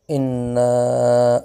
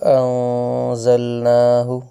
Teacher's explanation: یہاں پہ اِنَّا کے اندر دیکھیں غنہ ہوا اور انزلنا میں اخفاء ہوا، ان دونوں میں فرق دیکھیں۔